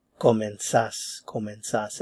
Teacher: So, the stress is on the last syllable.